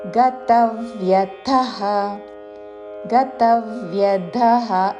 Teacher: తా మీద ఆఘాత చివరిలో మహాప్రాణాక్షము థ. గతవ్యథః గతవ్యథః కాదు, అల్పప్రాణతో గతవ్యథః అని కూడా కాదు.